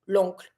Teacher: So that here, when you're going to say the uncle, it's going to be smooth, l'oncle, and not le oncle. Because if you pronounce those two vowels, you're going to have to break your pronunciation. So it's not going to be as smooth as we want it to be.